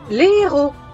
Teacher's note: la liaison interdite avec les mots qui commencent par H aspiré. Les héros. Jamais dire les héros.